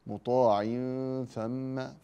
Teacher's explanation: تنوين بعده ثاء مطاع ثم فاخف التنوين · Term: اخفاء